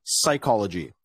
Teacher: PS at the beginning of the word is pronounced just as s so for example we never say psychology we always say psychology